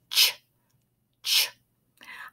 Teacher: our voice is off for the CH sound but it's still an explosive sound with lots of air coming out